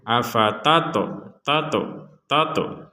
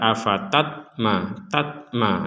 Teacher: ada huruf ta bertanda sukun, maka kita memantulkannya afatato, tato. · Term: pantulan